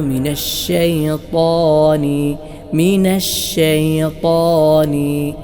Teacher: ചേരുക ഈ രണ്ട് സിഫത്തുകളും കൊടുക്കണം അതോടൊപ്പം തഫ്ഹീം എന്ന ഒരു അവസ്ഥയും നൽകണം തഫ്ഹീം അഥവാ തടിപ്പിച്ചുകൊണ്ട് ഉച്ചരിക്കുക ശബ്ദ പ്രതിധ്വനി വായനിറയെ ഉണ്ടാകുന്ന രൂപത്തിൽ ത്വ ഈ രൂപത്തിൽ ഉച്ചരിക്കണം അപ്പോഴാണ് മിനശൈത്താനി മിനശൈത്താനി ഈ രൂപത്തിലുള്ള ഉച്ചാരണമായി മാറുന്നത്